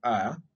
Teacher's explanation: before the Glide to e becomes noticeable uh the a sound is said longer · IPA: /a/